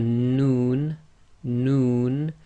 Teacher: the tip of the tongue pressing on the front hard palate. Your lips actually go a bit round with the Noon, Noon.